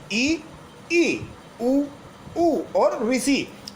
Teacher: संवृत स्वर वो स्वर होते हैं जिनका उच्चारण करते समय मुख द्वार सकरा हो जाता है